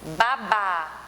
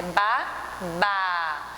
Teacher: o último ba, ele tem uma tonicidade maior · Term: oxítona